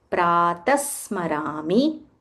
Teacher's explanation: When you combine a visarga followed by sa, it becomes pratasmarami. Stress on that sa a little more.